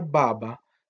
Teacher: la ba del inicio es lo que llamamos una oclusiva, es decir, porque explota. Pero la segunda no.